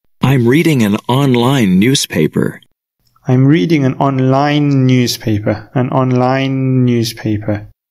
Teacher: So this E, it's a silent E. The last sound is a consonant sound, N, and the first sound of the next word is the consonant sound, N. So these two words are also linked when we pronounce them.